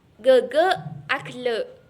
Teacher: huruf GH merupakan kontoid plosif dorsovelar, bersuara dan beraspirasi